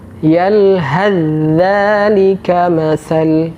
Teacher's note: Contoh yang lain, yalhath dzalika masal. Huruf ta dimasukkan ke huruf dza. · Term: idgham mutajanisain